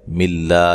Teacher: لفظ اللہ کو باریک پڑھنا ہے، اس سے پہلے حرف پر زیر ہے